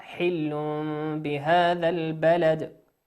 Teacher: حل بهذا البلد، تنوين أتى بعده حرف الباء، والباء من حروف ماذا؟ الإقلاب